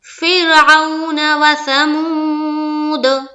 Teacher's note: آگے چلتے ہیں، فرعون و ثمود، فر فا را زیر فر، را باریک، کیونکہ را ساکینہ سے پہلے زیر ہے